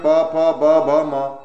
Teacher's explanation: हिंदी की ओष्ठ व्यंजन ध्वनियां